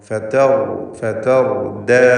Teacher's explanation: ദാലിൽ തഫ്ഖീം വരാതെ സൂക്ഷിക്കുക. റായിന് മാത്രമാണ് തഫ്ഖീം. തൊട്ട് മുമ്പിലുള്ള തായിനോ ശേഷമുള്ള ദാലിനോ തഫ്ഖീമില്ല. എല്ലാം തർക്കീഖിൻ്റെ ഇസ്തിഫാൽ ചെയ്ത് ഇസ്തിഫാലിൻ്റെ ഹർഫുകളിൽ പെട്ടവയാണ്.